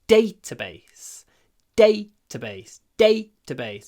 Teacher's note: So, as usual, when we have a word made of two nouns, data and base, the stress is on the first one.